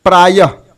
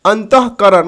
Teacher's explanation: विसर्ग भी अनुस्वार की तरह स्वर के बाद आता है, इसका उच्चारण ह की तरह होता है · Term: विसर्ग युक्त